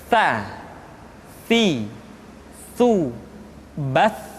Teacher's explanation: Jadi yang tepat adalah ujung lidah disentuhkan dengan dinding dua gigi seri bagian atas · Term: huruf ta